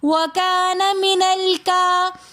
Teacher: کھڑا زبر ہونے کی وجہ سے ہم ایک الف کی مقدار کھینچ کر پڑھیں گے